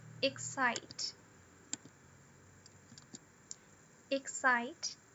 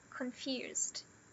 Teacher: O primary stress a partir da segunda sílaba.